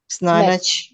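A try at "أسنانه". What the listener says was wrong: ई नहीं करना, अस्नान है, वो हमजा है ना ऊपर. अस्नाना पढ़ेंगे, अस्नाना.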